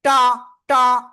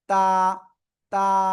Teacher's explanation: টা টা এরকম বলা যাবে না, এটা বললে কিন্তু ভুল হয়ে যাবে। জাস্ট নরম আওয়াজ হবে